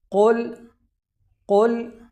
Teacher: یہاں پر لفظ قل کے اندر قاف موٹا پڑھا جائے گا کیونکہ یہ حروف مستعلیہ میں شامل ہے، اور حروف مستعلیہ کو ہمیشہ ہر حالت میں پر یعنی موٹا پڑھا جاتا ہے، تو اس وجہ سے اس قاف کو موٹا پڑھا جائے گا۔